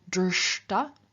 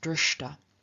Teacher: And so, for example, of drsh, to see, we have the ta participle drshta, where both the sh and the T of the ta have turned into their retroflex equivalents, so sh has become sh and t has become t, and together they're very straightforward to pronounce drshta.